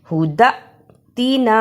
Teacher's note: اسے ہدا اتنا نہیں پڑھنا ہا پیشو دال زبر حمزہ دا حمزہ پر جزم ہے اس لیے جھٹکا بھی لگانا ہے اور دال کو حمزہ سے ملانا بھی ہے